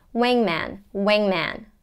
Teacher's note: the air comes up through the nose wing wing wing and then man as in cat an open vowel sound